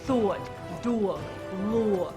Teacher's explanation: And the aw sound in thought, dog, and law become a diphthong. So they become a two-element sound for thought, dog, law.